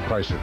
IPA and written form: ˈkraɪslər (Chrysler)